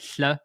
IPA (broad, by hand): ɬ